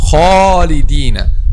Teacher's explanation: the alif here should be heavy. Why? Because it comes after a heavy letter.